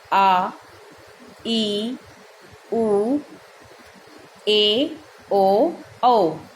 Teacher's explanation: जिनके उच्चारण में ज़्यादा समय लगता है, दुगना समय, उसे दीर्घ स्वर कहते हैं।